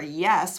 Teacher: for yes we start with that east sound that long e sound